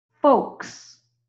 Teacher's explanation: remember we don't pronounce that L